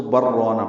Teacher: تو ہم یوں پڑھتے ہیں بل رونا، اور اگر سکتہ نہ کرنا ہو یعنی ملا کے کسی نے پڑھنا ہو تو پھر یعنی اس کی بھی روایت موجود ہے، تو پھر یوں ہوگا کہ لام اور را کا ادغام کیا جائے گا، یہ ادغام متقاربین ہوگا اور اس کو بر رونا پڑھیں گے، لیکن ہمارے نزدیک سکتہ ہی واجب ہے اور اس لیے سکتہ کرنا ہے، ہم بل رونا پڑھیں گے، را پر اور الف مدہ ہے، 2 حرکات لمبا کریں گے۔